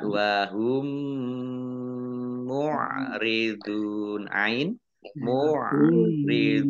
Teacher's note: Dhammah wawu sukun mat tabi'i, tetapi karena bertemu dengan huruf terakhir yang dibaca sukun karena waqaf, maka menjadi mat arid lis sukun. Baca panjang, boleh 6, boleh 4, boleh 2 harokat. · Mim sukun bertemu dengan huruf mim, bacaan idgham mimi atau idgham mutamasilain. Dibaca ya mendengung ya ditahan mendengungnya ya 2 harokat.